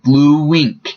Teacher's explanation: sound in the middle so it sounds like blue wink bln there is a little bit of a w in between the two instead of a space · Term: linking, linking sound